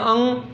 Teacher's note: अंग का जब करते हैं अंग तो आवाज़ कहाँ से निकलती है, नाक से निकलती है। इसे नासिका कहा जाता है, इसलिए क्या कहा जाता है, नासिका।